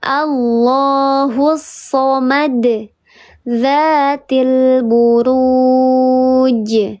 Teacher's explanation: Pantulannya terdengar lebih besar daripada qalqalah yang sugra. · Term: qalqalah yang kubra